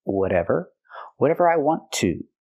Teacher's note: We hear the T in whatever pronounced as a fast D because it's between vowels.